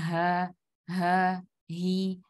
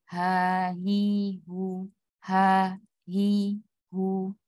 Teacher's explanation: Kalau misalnya ada yang mengatakan dada itu tidak. Jadi di tenggorokan saja. Dia di tenggorokan paling bawah.